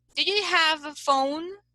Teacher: So you say, for instance, do you have a phone? So it is a rise intonation